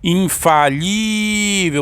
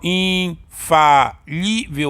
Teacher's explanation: a sílaba mais forte aqui, o li, então ela é paroxítona